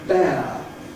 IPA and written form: beə (bear)